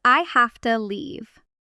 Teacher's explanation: the word to almost always reduces to t in casual speech unless it's emphasized